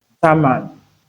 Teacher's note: the bilabial nasal here, influences the alveolar plosive sound